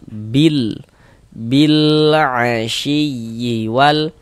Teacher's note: huruf lamnya itu dibaca izhar. Maksudnya itu terbaca jelas dia. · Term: izhar qamari